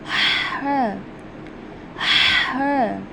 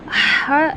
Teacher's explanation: अब हमारा next word है ह जो हम ह अदा करते हैं ह को हम कहते हैं खलकी लेटर खलकी का मतलब होता है कि हम इसको अपने खलक से यानी कि हम अपने गले से इसको अदा करते हैं और गले के दरमियान वाले हिस्से से यानी कि जो हमारे खलक के हलक का दरमियान वाला हिस्सा है मिड मिड पार्ट है वहां से हम इसको अदा करते हैं